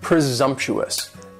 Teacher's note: presumptuous has four syllables and the stress is on that second syllable